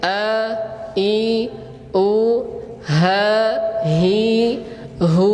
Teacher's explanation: secara rinci huruf hamzah dengan huruf ha ini cara menyebutkannya yaitu dengan apa? Menggetarkan pita suara.